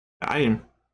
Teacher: I don't really say the te